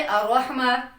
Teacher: हमारी जुबान पीछे ही रह जाती है हम जुबान को मजबूती से ऊपर मसूड़ों को लगाते ही नहीं है